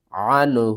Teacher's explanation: نون ساکن کے بعد حروف حلقی میں سے ہا ہے تو یہاں پر اظہار ہوگا